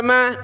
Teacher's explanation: میم پر صرف زبر ہے تو زبر کو ہم نے نہیں کھینچنا